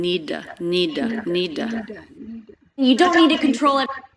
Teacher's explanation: before need need done so this is just like earlier when she reduced the word to to flap and schwa she's doing it again